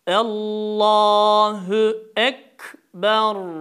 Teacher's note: mahreci yakın olan harf kaf harfidir kaf harfi dil kökünün bir parmak yukarısından çıkar